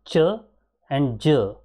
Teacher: complete closure of articulator there is a blocking of here and slow release with audible friction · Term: affricate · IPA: /tʃ/ /dʒ/